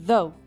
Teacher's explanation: ponta da língua entre os dentes, som do Z